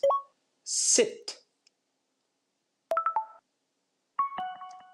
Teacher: I purposely on purpose made this sound much shorter and much more open